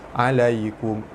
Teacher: Alaikum baris atas bertemu ya di tengah kalimah, hukumnya mad lin. Cara bacanya panjang dibaca lembut panjang 2 harakat.